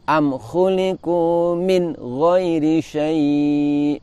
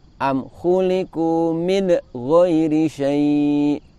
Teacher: Min terlalu kuat menekan sehingga nun mengeluarkan bunyi pantulan atau qalqalah, padahal nun tidak memiliki sifat qalqalah.